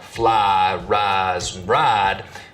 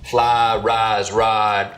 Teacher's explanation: full price smoothing where some Southerners smooth the diphthong and words like fly rise and ride